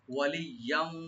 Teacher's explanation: ইয়াটাকে double করে ইদগাম করবেন ওয়ার সাথে গুণা সহকারে।